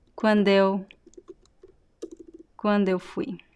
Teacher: There's also a liaison. It sounds like quando eu fui. So quando eu sounds like one word.